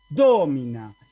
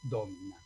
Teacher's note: El acento cae en la O. ¿Por qué? Porque la penúltima no es larga. Y si no es larga, no puede caer ahí el acento.